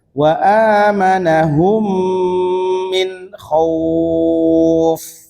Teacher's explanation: Maka ketika ada mim mati bertemu mim maka dia ditahan ya. Jadi wa amanahum ditahan dulu ya. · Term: idgham mimi